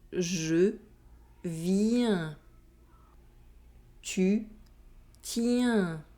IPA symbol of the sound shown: ɛ̃